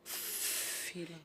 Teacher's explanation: Um som é surdo quando eu faço... A minha minha prega vocal não vibra